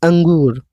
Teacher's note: अनुस्वार, इसमें केवल नाक से ध्वनि आती है, जैसे अंगूर, इसमें आप बोलेंगे मुंह से, लेकिन जो हवा है वो सिर्फ नाक से निकलती है।